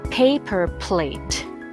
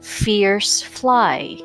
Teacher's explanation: These two are both unvoiced sounds, but P is produced with a sudden puff of air, almost like spitting, whereas F is a continuous release of air between the top teeth and the bottom lip.